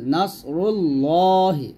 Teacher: এখানে আমরা মোটা করবো কারণ পেশ আসছে